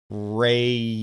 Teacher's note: When I say rro re, my tongue is pulled back in my mouth.